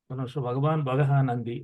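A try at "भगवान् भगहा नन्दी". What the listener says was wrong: అక్కడ దీర్ఘం పలకాలి. అది పలకకూడదు. అవగ్రహం పెట్టారు కాబట్టి పూర్వపదంలోనే దాని దీర్ఘం వచ్చేస్తది. సవర్ణ దీర్ఘ సంధితో అక్కడ వచ్చేసింది అది. అక్కడ దీర్ఘం పలకాలి.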